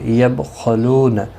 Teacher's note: یبخلون با ساکن پر قلقلہ ہوگا، خا حروف مستعلیہ ہے، پر پڑھا جائے گا